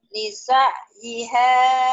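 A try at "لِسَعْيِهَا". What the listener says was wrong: Bukan bisa tapi lisa yiha.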